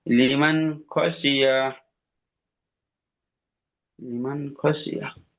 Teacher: ইয়ার উপরে জবর আছে, জবরটি হলো হারাকাত, তাড়াতাড়ি পড়িতে হবে। টান দেওয়া নিষেধ।